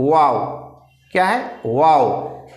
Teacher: वाव बोलने के लिए आपको दांत को टच करना ही नहीं है, ठीक है, सिर्फ मुंह गोल होगा, सिर्फ क्या होगा, सिर्फ मुंह गोल होगा। मुंह की दोनों होठों की गुलाई से, दोनों होठों की गुलाई से वाव अदा करते हैं